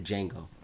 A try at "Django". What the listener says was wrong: Django, you mean? You want to pronounce the D?